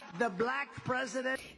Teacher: So he doesn't say like, oh, that's a black president. He says black, super long, kind of loud, right? It's really distinctive from the rest of the phrase in this clip. · The other thing is the L in that is particularly light, so the tongue is far forward in the mouth, and the A is really high in the mouth. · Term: elongated